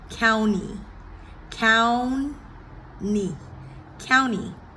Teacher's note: typically T following the N, the T is silent.